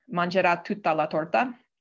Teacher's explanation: This is phrased as two separate maximal phi, and you can tell from the lengthening on both mangerà and torta.